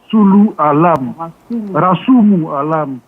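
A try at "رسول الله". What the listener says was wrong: C'est pas Alam. Rasulu Allah.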